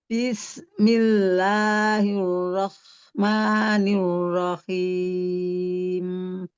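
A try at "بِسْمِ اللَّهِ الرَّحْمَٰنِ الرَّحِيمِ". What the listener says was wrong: Nah tadi tuh di tegas, Bismi, coba Bunda, Bismi. Iya, dialirkan rokowahnya, huruf sinnya, suaranya dipanjangkan. Bismillah. Tetapi kita coba lagi ya, dialirkan dengan lembut aja ya Bunda, supaya jangan terlalu hentak-hentak. Bis, dialirkan. Bismillahirrahmanirrahim.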